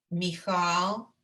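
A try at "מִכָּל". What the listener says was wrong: No, not chal. It's a k.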